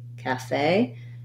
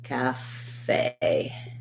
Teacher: just holding that A longer and being shorter and lighter on the calf syllable. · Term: second syllable stress